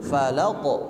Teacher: Nah, falaq ketika diucapkan jangan ditekan, Pak. Jangan falaq, karena tidak ada tasydid, tapi dia langsung memantul.